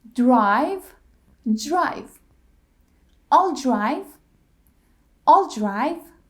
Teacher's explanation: when D and R blend together they sound J like